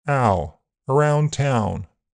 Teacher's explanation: In general American, owl has a more front starting point. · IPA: /aʊ/, [æʊ]